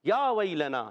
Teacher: لو جو ہے واو مدہ ہے تو الف مدہ واو مدہ دونوں کو ایک ایک الف کھینچنا ہے. یا ویلنا، یا پر کھڑا زبر، کھڑی حرکات کو ایک الف کھینچ کر ادا کرتے ہیں